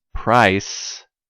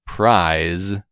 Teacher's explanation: remember how to pronounce each sound s and z voiceless and voiced